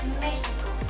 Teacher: La X en el español de México también puede sonar como una J